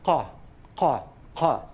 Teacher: So what is written as Q, if you do it in IPA, this is a sound that's known as a uvular stop. · It's like K, but further back in the mouth. The back of your tongue touches the uvula and produces a sound that's not ka, but ka.